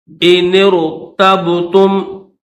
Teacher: یہ نون جو ہے اس نون کو را کے ساتھ ملائیں گے، یہ الف نہیں پڑھیں گے.